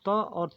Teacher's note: और जो त और थ ध्वनि होती है यह दंत से होता है।